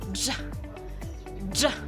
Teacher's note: ang hangin ay una munang hinaharangan o pasara at biglang pinapalusot o pasabog sa bibig. Kaya parang pinagsamang prekatibo at pasara.